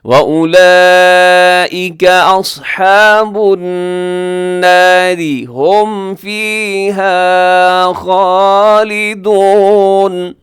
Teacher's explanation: آگے دیکھیے گا وَأُولَئِكَ أَصْحَابُ النَّارِ، نار میں اگر وقف کریں گے تو را پر پڑی جائے گی کیونکہ را ساکن سے پہلے زبر، لیکن اگر ملا کے پڑھیں گے تب را باریک ہوگی کیونکہ را کے نیچے کسرہ ہے